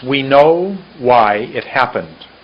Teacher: happen was much longer than it and know was much longer than we